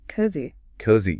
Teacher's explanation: It starts with a softer consonant, it moves into a long, drawn-out O · It moves into a long drawn out O. And it relies on the soft Z that creates this gentle vibration in the mouth. And then it ends on the open relaxed E sound.